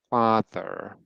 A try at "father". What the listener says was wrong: So that vowel, fa, there's no rounding there. Make sure. Father, fa. So the rounding is like pushing in a bit. Like I know the mouth is naturally round, so saying no rounding is not possible, but no added rounding.